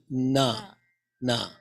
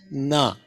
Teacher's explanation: na is Dental na na okay tongue is touching the teeth